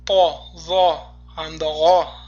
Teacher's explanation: Po, zo hamda g'o harflari, demak, aynan ularning ustida fatha turganda o tovushini beradi, a emas.